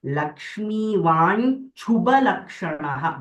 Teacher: both Mahapranas, Chu and Bha